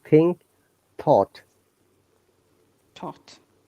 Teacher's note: if your tongue touches your uh tooth this sound is unvoiced sound